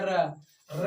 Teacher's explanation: जैसे हम बोल दिया र बोलने से क्या आपका जीभ देखिए, जीभ र बोलिए, र बोलने से क्या होता है? आपका जीभ ऊपर नीचे 2-3 बार कंपन होता है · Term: प्राकंपित व्यंजन